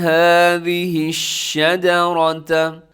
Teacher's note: شین کے اندر ایک صفت پائی جاتی ہے جسے کہا جاتا ہے تفشی، آواز پھیل جاتی ہے. هذه الشجرة، شجرة میں را موٹی پڑی جائے گی.